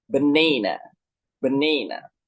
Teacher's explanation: The primary stress falls on the second syllable, banana, banana.